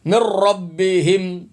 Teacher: نون نہیں پڑھنا، میم را زیر مر پڑھنا ہے، میم را زیر مر، را زبر را، مر را، مر را، من ربہم۔